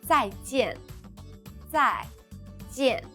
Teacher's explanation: Both 在 and 见 are in the fourth tone, the falling tone.